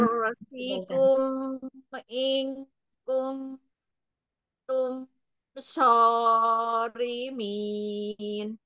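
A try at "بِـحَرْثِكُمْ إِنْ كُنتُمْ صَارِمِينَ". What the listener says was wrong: Ya, hati-hati dua harokat pada huruf so-nya. Jangan sorimin kepanjangan. Dikurang ya, Yang?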